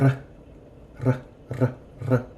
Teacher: And so the differences between the R's in English and Spanish, the R is formed in Spanish on the tongue, on the tip of the tongue, and the R is formed in English at the top of the throat. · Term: double R